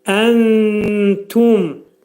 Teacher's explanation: Nunu tənin məxrəcində gizlədirik. Sanki t hərfi də eşidilir.